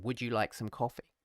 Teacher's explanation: by going up at the end, that makes it clear that I'm asking you a question. Would you like some coffee?